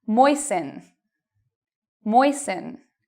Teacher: even though you see T-E-N, T-L-E, T-E-N, you do not pronounce the T in these words